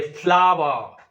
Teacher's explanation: the first syllable flow is stressed and war is unstressed sometimes the first one is stressed the second one is unstressed it is a falling Rhythm